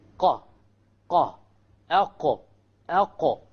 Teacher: You cannot go further behind. This is the makhraj of the Qaf, connecting the innermost part of the tongue, which is right above the throat.